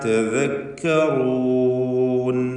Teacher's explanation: തദക്കറൂൻ റൂ എന്ന റായിന് തഫ്ഖീം കൊടുക്കണം.